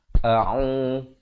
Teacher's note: Hamzah pangkal kerongkong, Ain pertengahan kerongkong